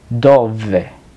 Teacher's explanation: La V corta siempre se pronuncia V, que sería un sonido labiodental